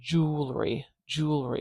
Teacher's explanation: a voiced sound so we've got vibration at the throat now I go directly into the vowel sound when I say jewelry jewelry so I have an ooh after that